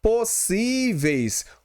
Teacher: o som tanto da vogal E quanto da semivogal I, eles saem todo pela cavidade oral. Então, é um ditongo decrescente oral, tá bom, pessoal?